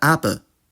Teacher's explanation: the labial aspect of [kʷ] and [gʷ] completely took over, and they became [p] and [b]